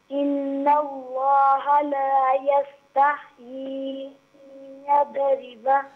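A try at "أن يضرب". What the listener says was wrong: देखिए इसको यदरिबा ना पढ़े, यदरिबा। हाँ, दौत को यहाँ पर हरकत नहीं देनी, ठीक है ना। आपने पहले भी हरकत दी थी, अभी भी दी, ये मिस्टेक है।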